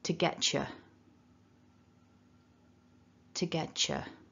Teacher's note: the t and the y when they're connecting in an instance like this it sounds like a cha as in the beginning of the word chicken